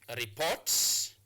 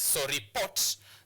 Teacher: So you place your stress marker on the second syllable.